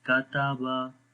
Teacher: बारीक पढ़ेंगे तीनों हुरूफ, मोटा नहीं पढ़ेंगे और लंबा भी नहीं करेंगे।